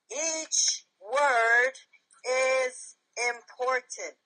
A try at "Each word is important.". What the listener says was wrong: Okay, except you forgot each wasn't that important. Try it again.